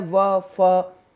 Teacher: तो व फ मतलब जीभ भी हमारी हल्के से दांतों से के पास से मुड़ जाती है, झुक जाती है, और होंठ जो है बिल्कुल ऊपर के होठों को टच नहीं करते, तो ये दंत्योष्ठ, यानी कि निचला होंठ प्लस ऊपरी दांत के योग से ये वाली जो ध्वनियाँ हैं ये निकलती हैं